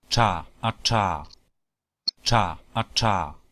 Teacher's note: es muy parecido a la R en el sentido de que también es retroflejo